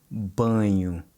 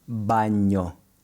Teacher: When you produce the ñ sound in Spanish, your tongue pushes hard against the roof of your mouth, as in the word baño. But with the NH in Portuguese, your tongue barely touches it, if at all. In fact, I found that the best way to practice getting this softer sound is by pulling your tongue back as soon as it's about to make contact, as in the word banho versus baño in Spanish.